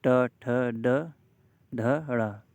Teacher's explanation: ट वर्ग के जितने भी वर्ण हैं, अक्षर हैं, उनको सबको बोलेंगे तो जीभ आपकी मूर्धा से टच होगी।